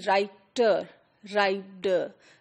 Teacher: d, and t would be clearly pronounced with a difference in British English, whereas American English would not do so.